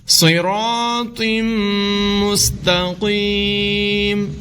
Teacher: الف مدہ ہے، لمبا کر کے پڑھیں گے را کو، صراط، تنوین کے بعد میم ہے حروف یرمالون میں سے، یہاں پر ادغام ہوگا، غنہ کر کے پڑھیں گے